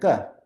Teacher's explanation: So for example, if you're specifying, you want to know what sound comes if you use a guttural sound, if you use the throat and it's hard and unaspirated, you get a ka